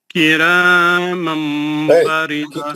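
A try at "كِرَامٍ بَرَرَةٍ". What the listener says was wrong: کرامن را کو موٹا پڑھو. میں ابھی میں اب بھی بولا آپ کو راکو موٹا پڑا, یہاں پہ بھی دونوں را پہ زبر ہے, پھر اب ہر را کو میں آپ کو بولوں کیا؟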